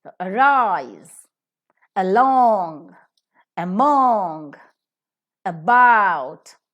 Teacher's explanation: the first syllable will have a weak vowel sound